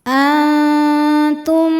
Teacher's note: Cara bacanya nun disamarkan ke ta disertai dengung. Dengungnya sedikit. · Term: ikhfa hakiki